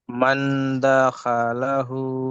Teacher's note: নুন সাকিনের আওয়াজকে এক আলিফ পরিমাণ গুণনা করে পড়তে হবে।